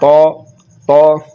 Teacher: ज़ुबान का दरमियान वाला हिस्सा तालु के दरमियान वाले हिस्से से मिल रहा है, और ये पुर यानी कि मोटा पढ़ा जा रहा है तौ तौ। तो ये बारीक हो गया ता और ये मोटा हो गया तौ।